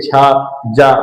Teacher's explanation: बिल्कुल आपकी तालु से जो है जीभ टकरा रही है, मतलब स्पर्श कर रही है